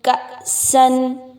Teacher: آپ اس پہ حمزہ کو ہلا کے نہیں پڑھیں گے، نہ ہی اس کو ڈھیلا پڑھیں گے بلکہ جھٹکا دے کے پڑھیں گے